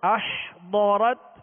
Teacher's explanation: ضاد کو پر پڑھیں گے حروف مستعلیہ میں سے